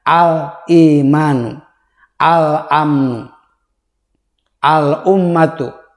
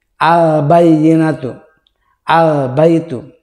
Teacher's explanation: Cara membacanya, lamnya dibaca jelas, netral, kelihatan. Contohnya al menghadapi alif, al imanu, al amnu, al ummatu. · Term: idhar qamariyah